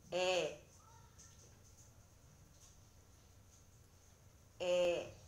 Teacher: 모음 에는 혀의 위치가 아에 비해서 조금 높고 발음할 때 입을 벌리는 정도가 아와 같습니다. 그러나 입술은 양옆으로 당기면서 조금 평평하게 만들어주면서 소리를 냅니다.